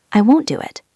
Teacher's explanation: Won't ends in T. Do starts with D. T and D are similar. They merge.